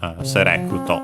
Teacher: And yeah, the accent is just like in English on the re. So select, serecuto, low, high, low, low